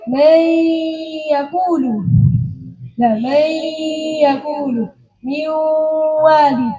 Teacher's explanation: Hanya makhrajnya nun saja yang masuk pada ya dan waw. Tapi sifatnya masih tetap, yaitu sifat gunnahnya. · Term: idgham nakis